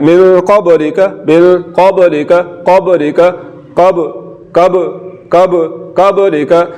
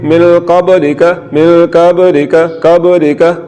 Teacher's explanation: با میں صفت قلقلہ ہے تو جھٹکا لگا کے پڑھنا ہے، جنبش دینی ہے، حرکت دینی ہے، مخرج کو ہلا کے پڑھنا ہے